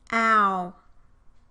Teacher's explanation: During the production of the vowel in the word how, the tongue moves from the low central position towards a high back position, and the lip position also moves from unrounded to rounded